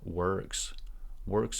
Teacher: again the word works it's not o here it's ER